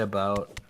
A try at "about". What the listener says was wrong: It sounds like you're almost saying a boat, which I say that too.